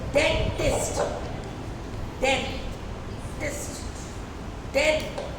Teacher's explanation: डेंटिस्ट, इसमें आई की value कम है, डेंट में जो ई की वैल्यू है वो ज़्यादा है।